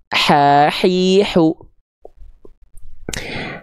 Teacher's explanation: Kalau H kecil dilafalkan naik sedikit ke bagian tengah tenggorokan. Dia karakter nafasnya mengalir dengan berbisik.